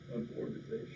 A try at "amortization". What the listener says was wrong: Every student since the beginning of the time, they break that up and call it amortization. It's amortization. Amortization. It don't have the word mort in it. Amortization.